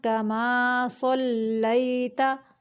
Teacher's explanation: या साकिन से पहले लाम के ऊपर ज़बर है तो ये या लीन है, इसको नरमी से पढ़ेंगे। कमा, कमा नाक में मीम की आवाज़ को नहीं लेके जाना, मुंह से निकालना है।